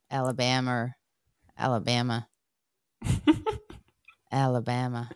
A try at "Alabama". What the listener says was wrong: Alabama. There's no R. Alabama.